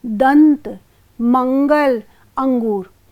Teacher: अनुस्वार यह स्वर के बाद आने वाला एक व्यंजन है जिसकी ध्वनि नाक से निकलती है